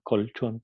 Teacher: Entonces, cuando L viene seguida por una alveopalatal ch, entonces, por el colchón, el sonido L pasa de ser un sonido alveolar a ser un sonido alveopalatal. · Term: L alveopalatal